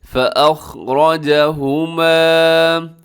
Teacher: لمبا ضرور کیجیے گا ہوما کو، کیونکہ اس کے ساتھ الف ہے، الف کی وجہ سے لمبا کیا جاتا ہے۔